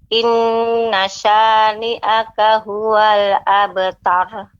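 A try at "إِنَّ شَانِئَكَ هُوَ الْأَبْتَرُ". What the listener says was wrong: Untuk pengucapan ro-nya ya. Ro-nya lebih ditebalkan. Masih terasa agak lebih nih. Terus berlatih di rumah, terutama pengucapan ro yang sukun. Ini sebelumnya harokat fathah, maka harus dibaca dengan tebal.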